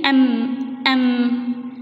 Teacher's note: نعم، لسهولة النطق، لأن الميم تشارك الباء في المخرج، مخرجهما واحد وهو الشفتان